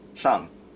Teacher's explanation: There's 5 tones, and "shang" is going downwards. It's a downward tone. It's going from high to low.